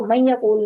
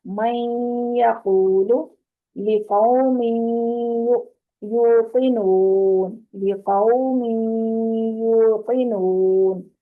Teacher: تو یہ من یو پہ جو ہے نا 2 حرکت جتنا ٹائم لگانا ہے